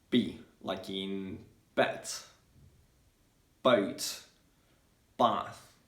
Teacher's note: the letter b um is short and intense and it's like a blast